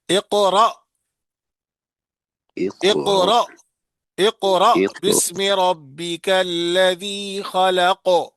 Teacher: جس طرح پڑھیں گے اقرا، جھٹکا دیتے ہیں، کیونکہ جب حمزے پر جزم ہو، جب حمزے پر جزم ہو تو پھر جھٹکا کے ساتھ پڑھے